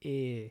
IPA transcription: eː